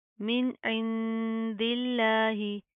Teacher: वयकूलून हुआ, हुआ, मिन इंदिल्लाही, मीम नून ज़ेर मिन, मिन, नून साकिन है, उसके बाद हरूफ हल्की में से क्या हमजा आ रहा है, ठीक है। तो यहाँ पर सिंपल इजहार होगा, हम नून के आवाज़ को जाहिर करेंगे